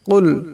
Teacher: বড় কাফ, আওয়াজটা গলা থেকে আনতে হবে।